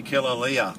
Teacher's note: I think every vowel is pronounced separately